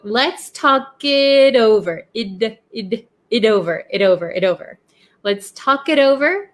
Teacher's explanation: the T in it becomes a flap T because it is sandwiched in between 2 vowels